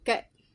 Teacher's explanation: low vowels. That tongue is low.